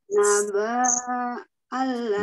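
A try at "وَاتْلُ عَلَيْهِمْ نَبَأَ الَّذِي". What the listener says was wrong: naba alladhi banyak pendek naba alladhi banyak pendek. Ini alifnya sudah ada fathahnya, jadi itu bukan tanda panjang ya.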